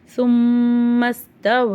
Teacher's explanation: குண்ணா செஞ்சு ஓதணும் சும்மஸ்தவ இந்த இடத்துல வந்து மத்தே முன்பசில் இருக்கு அதாவது மத்துடைய வார்த்தைக்கு அடுத்த எழுத்துல ஹம்ஸா இருக்கு அப்ப அந்த மத்த நம்ம நாலு அலிப் வரைக்கும் நீட்டி ஓதலாம் · சும்மல மீம் மேலே ஷத்து இருக்குது. குன்னா செஞ்சு ஓதணும்.